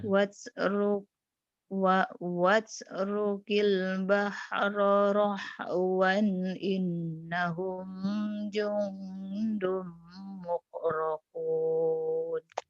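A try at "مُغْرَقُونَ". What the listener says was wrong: bukan muk tapi mugrokun.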